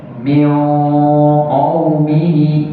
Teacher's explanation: Ikhfa'nya tebal, ya. Min karena bertemu dengan huruf yang tebal.